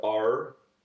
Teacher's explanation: the R's are pronounced and quite actually full and bold, like R, um, like er. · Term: rhotic accent